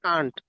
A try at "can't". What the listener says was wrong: কান্ট ওটা মনে হয় ব্রিটিশ উচ্চারণে বলে, কিন্তু স্বাভাবিকভাবে আমেরিকান উচ্চারণে ক্যান্ট বলে, কান্ট বলে।